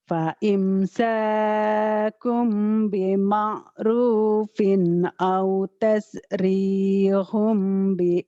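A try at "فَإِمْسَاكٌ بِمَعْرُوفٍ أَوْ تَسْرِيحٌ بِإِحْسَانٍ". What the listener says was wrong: bagus, cuman lagunya belum melebar ya, masih apa ya? Ibarat kalau jalan model itu lenggak-lenggoknya belum pelan gitu, masih serut gitu kayak mau ngejar itu dukun beranak gitu kan.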